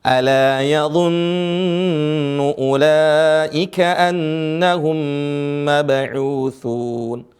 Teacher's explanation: mim sukun bertemu dengan mim ditahan dua harakat boleh ditahan menjadi empat harakat